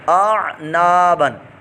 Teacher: ٹھیک ہے، یہاں پر حمزہ عین زبر آ، یہ آواز درست کیجیے گا، آ کی آواز بھی آئے اور عین کے بھی، پہلے آ پھر ساتھ ہی عین